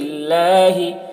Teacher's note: اللہ کلام سے پہلے زیر ہے. اللہ کلام باریک پڑھیں گے.